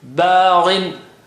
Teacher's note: Gha is high sounding. The double kasra brings the effect down, but still there.